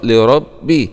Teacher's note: راء فتحة مع التفخيم